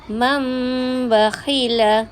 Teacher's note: Kita tengok nun tu dah jadi bunyi mim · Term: iqlab